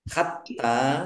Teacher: t-nya dibaca dobel ada tasdidnya ditekan biar tampak dobelnya